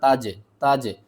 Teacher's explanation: زیر ری، تجری، جیم کے اوپر آپ نے قلقلہ کرنا ہے، قلقلہ یعنی کہ ہم جیم کو تھوڑا سا ہلائیں گے